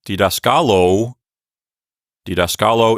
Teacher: that long final vowel has pulled the accent over one syllable